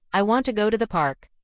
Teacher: For example, in the sentence, I want to go to the park. The stressed words are want, go, and park. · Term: sentence stress